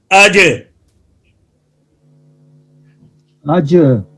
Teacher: جب قلقلہ کریں گے تو بعد میں آواز جو ہے وہ حرکت کرے گی، بند ہونے کے بعد آواز پلٹے گی